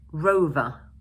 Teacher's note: in British English, we don't normally pronounce the final r sound, and instead, we use the Schwa sound